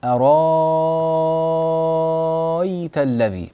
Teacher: فنحن نبدل الهمزه الثانيه التي بعد الراء نبدلها الى الف طويله المد